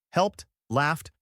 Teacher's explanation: with the T sound at the end, after voiceless sounds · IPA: /t/